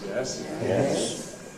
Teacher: the low rise, which starts at the bottom, goes to the middle.